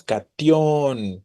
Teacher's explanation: Entonces la fortaleza o la fuerza recae sobre justo la vocal O.